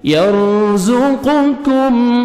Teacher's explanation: امن هذا الذي را ساکن سے پہلے زبر ہے, را کو اپنے پر کرنا ہے, زا کو زور سے پڑھیں گے, قاف کو موٹا کر کے پڑھنا ہے, کاف کو آگے باریک پڑھنا ہے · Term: قاف اور کاف کا